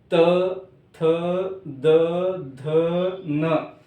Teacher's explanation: इनका उच्चारण करते समय हमारी जिह्वा कहां पर चिपक रही है? दांतों को पिछले हिस्से से चिपक रही है, यानी इनका जो उच्चारण स्थान है दंत्य। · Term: दंत्य वर्ण